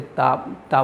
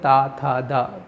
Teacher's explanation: जीभ कहां पे स्पर्श करती है दांत से स्पर्श करती है